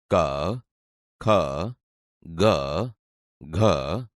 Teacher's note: તમે જોશો કે તે ગળામાંથી બોલાય છે, તેથી આ કંઠ્ય વ્યંજન છે.